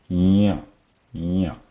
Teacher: the top surface of the tongue is going to block the air at the top of the palate there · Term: Anunasika